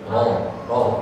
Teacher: Dia ada, tapi dia samar, ya. Artinya getarannya kecil aja getarannya